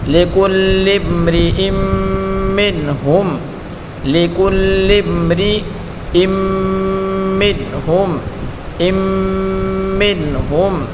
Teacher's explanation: میم نون زیر من، میم کو نون کے ساتھ ملا کر پڑھیں گے، نون ساکن ہے، نون ساکن کے بعد ہا ہے، ہا اظہار کا حرف ہے تو اس نون کو ظاہر کر کے پڑھیں گے، ہا میم پیش ہم، ہا اور میم دونوں کو ملا کر پڑھیں گے۔